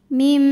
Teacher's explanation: Kemudian ada hukum iqlab karena nun sukun menghadapi huruf ba, maka nun dibunyikan diganti bunyi n-nya menjadi bunyi m, bunyi mim sukun disertai bunyi dengung, jadi kita tahan sampai ada suara masuk hidung.